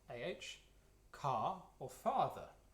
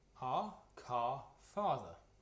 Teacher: the vowels are as for Latin except they're further back in the mouth